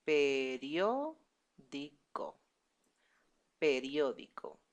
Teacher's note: The stress is in the first O.